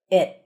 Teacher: Held T, you barely hear the T.